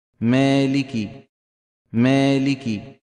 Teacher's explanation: ان المتكلم رفع وسط لسانه قليلا فصارت الالف مقلله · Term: اماله صغرى, إمالة صغرى